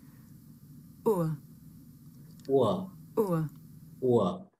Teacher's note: This is a diphthong, a double vowel sound. The shape the mouth makes changes from the beginning of the sound to the end. It's pronounced ur. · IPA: /ʊə/